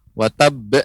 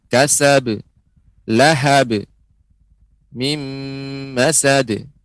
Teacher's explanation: tidak terdengar ada hamzah di akhirnya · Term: qalqalah